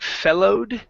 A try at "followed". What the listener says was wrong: that's going to be an ah sound at the very beginning.